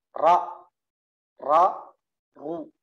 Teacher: Jadi ra ini di belakang gusi atas.